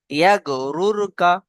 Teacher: রয়ের উপরে জাবার এবং পেশ এলে র পুর হয়।